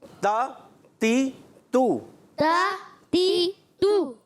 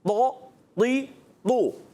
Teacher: تا باریک تھا اور طا موٹا ہے